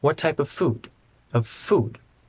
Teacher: The F in of and the F in food connect.